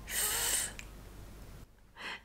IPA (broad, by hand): θ